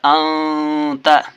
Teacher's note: نون ساکن کے بعد ذال ہے، ذال حرف اخفا ہے، اس لیے نون ساکن کو ناک سے چھپا کر پڑھنا ہے۔